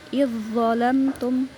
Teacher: zal langsung masuk ke dho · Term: idgham mutajanisain